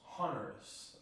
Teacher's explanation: the S turns into the R between the O and the I